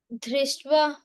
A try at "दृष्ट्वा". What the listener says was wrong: You're saying Drishtva. It is Drishtva. It is not Dha. It is Alpa Prana.